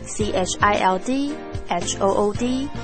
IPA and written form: ˈtʃaɪld.hʊd (childhood)